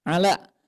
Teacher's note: Lam ini sifatnya tipis Bu ya, maka bunyinya ke huruf vokal A.